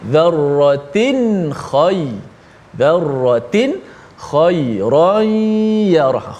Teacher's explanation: Dzarratin ada nun juga, nun mati juga pada tanwin, tapi tak boleh kita panjangkan gunnah. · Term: izhar halqi